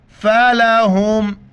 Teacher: ہا کو جیسے منہ سے ہوا نکالتے اسی طرح ادا کرنا ہے، گلے سے ادا نہیں کرنا ہے